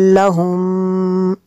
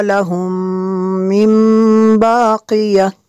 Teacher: میم ساکن کے بعد دوسری میم ہے، یہاں پہ ادغام شفیع ہوگا اس لیے غنہ کریں گے